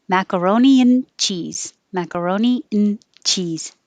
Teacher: you won't hear the and. It just gets shortened to an n.